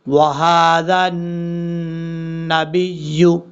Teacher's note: یہاں پر ہا بھاری ساؤنڈ کے ساتھ پڑھا جائے گا اور کھڑا زبر کی وجہ سے ایک الف کی مقدار لمبا بھی کریں گے۔ ذال کو جب نون سے ملائیں گے، بیچ میں حمزہ ہے پھر حمزہ ہے پھر لام ہے، تینوں حرفوں کو چھوڑ دیں گے، ذال نون زبر ذن، وہذا، نون زبر نا، پھر با کو یا سے ملائیں گے، با یا زر بی، یا پہ یو، وہذا النبی، اس طریقے سے۔